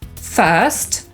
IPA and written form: fɜːst (first)